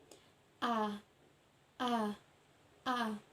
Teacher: Huruf A diucapkan dengan posisi lidah berada di tengah, bentuk mulut tak bundar, serta strukturnya terbuka